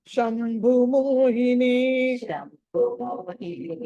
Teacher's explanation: భా అన్నది మహాప్రాణం ఒత్తి పలకాలి